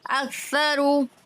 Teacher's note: اک کو یہ کاف کو باریک پڑھیں گے، گول والا جو قاف ہوتا ہے اس کو پر پڑھتے ہیں